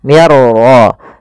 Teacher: Cara membacanya, masukkan nunnya kepada huruf ra sehingga suara nunnya hilang, langsung terbaca dengan jelas suara ra-nya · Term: idgham bila gunnah